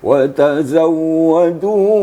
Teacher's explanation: kita tidak boleh memanjangkan bunyinya hanya sekedar mentasydidkan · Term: tasdik wau